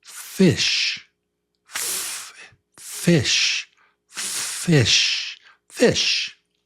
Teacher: The sound is F. It's teeth, gently, teeth on your bottom lip. On your teeth, on your bottom lip. So it's no voice. No voice. It's just air.